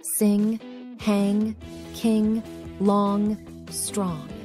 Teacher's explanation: pronunciation sound of n is called The Valor nasal sound NG this sound is created by vibrating the vocal cords while the tongue is pressed against the back of the mouth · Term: Velar nasal sound